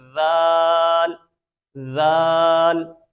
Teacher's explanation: اب یہ ذال کا مخرج سیم وہی ہے جو ہم نے سا کا مخرج پڑھا ہے، تو یہ اس کو بھی ہم نے زبان کی نوک اور اوپر والے دانتوں کے کنارے سے پڑھنا ہے